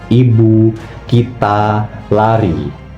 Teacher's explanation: posisi lidahnya dia sangat tinggi dan juga maju ke depan hampir menyentuh langit-langit keras. Untuk posisi bibir dia direntangkan tapi tidak dibulatkan. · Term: vokal I tinggi atas depan